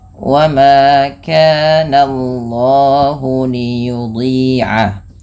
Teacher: Wa ma kana Allahu, Allahnya perhatikan jangan menebalkan langsung jangan menebalkan bunyi suara jangan menebalkan bunyi suara na-nya, tapi ditebalkan bunyi Allahnya, sehingga na-nya tipis, Allahnya tebal